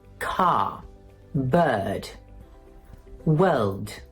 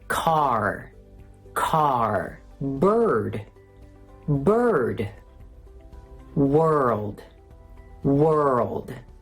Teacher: The American R is a very dark R. It's produced in the back of your mouth. If you struggle with it, try imitating a barking dog.